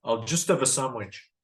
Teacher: Notice that have becomes of.